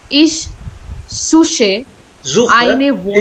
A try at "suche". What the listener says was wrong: Not suche. It's not suche. It's no ha sound. It's suche. Kha sound. Khargosh. Kharbuja. Kheti. Suche. Is suche.